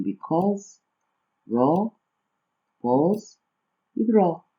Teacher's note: Temos ainda o AU e o AW, que no caso o som dele é O